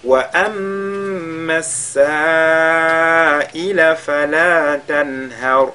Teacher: On fait al-wajibul muttasil, fala tanhar. Ici, nous avons nun sakina suivi de la lettre ha, on fera al-izhar.